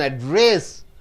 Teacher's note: Address, you stress on dress.